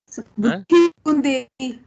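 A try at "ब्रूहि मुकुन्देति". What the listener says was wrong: Not Dehi. It is Deti. Bruhi Mukundeti.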